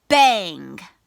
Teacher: the back of your tongue touches the roof of your mouth